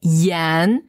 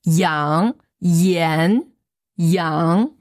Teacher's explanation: quand on n'a pas le G, on va beaucoup plus sentir le N. Alors que si on ajoute ce G, on va pas vraiment prononcer, plutôt on va avoir cette espèce de G un petit peu réservé.